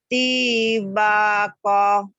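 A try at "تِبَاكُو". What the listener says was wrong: Mana yang panjangnya yuk. Koknya pendek ya Bu ya.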